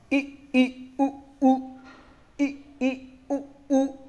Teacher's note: संवृत में सबसे कम खुलने वाला मुख द्वार है